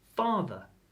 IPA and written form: ˈfɑːðə (Father)